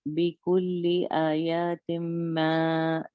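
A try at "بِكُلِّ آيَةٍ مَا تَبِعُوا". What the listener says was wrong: اگر آپ بولو گے نا یا کا مطلب ہو گیا کہ یا کے بعد الف بھی.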